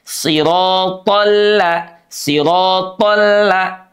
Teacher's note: dan l-nya jangan sampai menebal